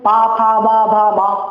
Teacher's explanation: अब आप पा जब बोलेंगे तो पा का उच्चारण ओठ में आ जाएगा